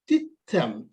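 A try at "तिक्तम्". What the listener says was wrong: T. Then ka half. Tik. Tam. Tik. Ka should come in between. Tik. Tam.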